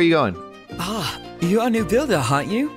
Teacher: he's got quite the breathy voice